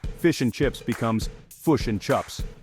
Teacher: The key difference is in the vowels. Kiwis have a short I shift.